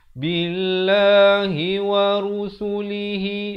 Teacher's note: Ramai orang baca wa rasulihi kerana biasa kita sebut rasul, tapi di sini ru. Ru ni dalam bahasa Arab, kalau rusulihi berarti jamak, yakni plural, banyak.